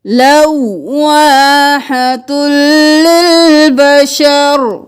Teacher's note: تا کو لام کے ساتھ ملائیں گے، تلل، لواحت للبشر.